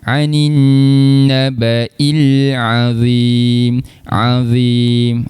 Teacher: Ain kita berikan penekanan sikitlah di tengah rongga kerongkong. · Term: huruf ain